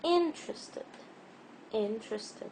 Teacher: So in this word interested, in is the stressed syllable.